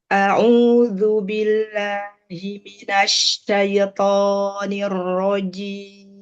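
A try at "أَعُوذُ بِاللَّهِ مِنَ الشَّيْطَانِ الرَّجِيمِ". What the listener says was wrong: Toknya kepanjangan. Syaito. Kepanjangan itu.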